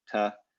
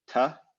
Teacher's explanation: So there's kind of a, there's a fronting of the consonant. The consonant is actually moved forward in the mouth from the hard palate to the alveolar ridge.